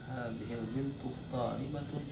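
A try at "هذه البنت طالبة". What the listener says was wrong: Nah, laisa soal. Jadi khabar harus intonasinya harus benar.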